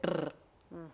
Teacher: Може да добијат дисторзија и билабијален изговор на гласот р.